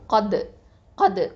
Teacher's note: காஃப் வந்து heavy letter, தால் சுக்கூன்னா கல்கலத்து சுகரா.